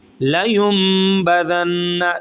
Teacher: دونوں دانتوں کے درمیان میں زبان کی نوک کو لائیں گے تو یہ نکلے گا ذال. ٹھیک ہے، اوپر والے دانتوں کے نوک کے ساتھ، کناروں کے ساتھ جب زبان کا کنارہ لگے گا تو یہ نکلے گا ذال.